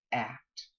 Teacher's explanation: this sound ah is a low front vowel and because it's low it's can't possibly become a nasal because